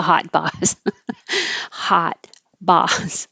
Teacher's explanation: the vowel is ah as in hot boss and the jaw is very open so remember that the a sound is as low as open